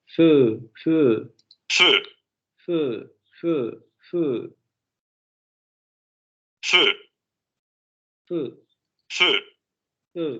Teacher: feu, Vean, es como si pronunciáramos, por ejemplo, la palabra fe en español, pero en lugar de decir fe, simplemente redondeamos los labios al final de la vocal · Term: semicerrada anterior labializada